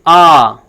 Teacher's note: यानी कि सबसे अधिक मुख्य द्वार आ के उच्चारण में खुलता है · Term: विवृत स्वर